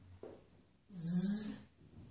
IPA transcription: z